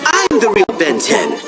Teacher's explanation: you can hear breathy air flowing through his lungs as he speaks